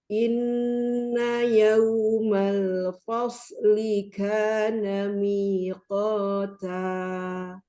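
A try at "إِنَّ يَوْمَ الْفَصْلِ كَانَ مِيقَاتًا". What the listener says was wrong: Tapi fa. Fasli. Huruf fa-nya tertib, sodnya baru tafkhim ya. Fasli, lah fos ya, jangan ngikut ke sod dulu. Fa-nya tertib.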